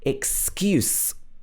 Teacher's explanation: pronounced excuse so the stress is in the same place but the last sound is a s s sound with no um movement in your vocal chords